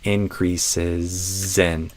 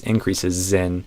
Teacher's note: I think I'd say increases in. So it's going to become a Z-I-N in the connected speech there